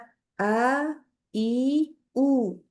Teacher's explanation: Hamzah itu keluarnya dari tenggorokan paling bawah. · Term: huruf hamzah